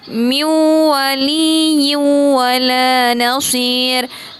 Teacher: Nun sukun bertemu dengan huruf waw, idgham bi gunnah.